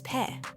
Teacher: In English, we puff air with our P's. In Spanish, try to leave that puff out. Say it gently without the breath.